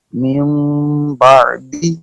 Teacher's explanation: نون ساکن اور تنوین کو میم سے بدل کر غنہ اور اخفاء کے ساتھ پڑھنا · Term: اقلاب